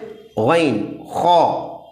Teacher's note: हलक के ऊपरी हिस्से से गन और ख अदा होते हैं